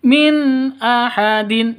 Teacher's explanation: nun mati bertemu dengan Hamzah cara bacanya jelas terang Kenapa karena izhar halq jelas tidak boleh dengung